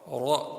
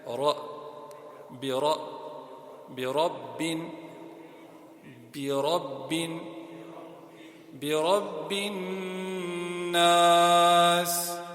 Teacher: The ra is full mouth. So every time you see a ra, and you see a zabar on it, or fatha, same thing, zabar, fatha, you pray the ra full mouth.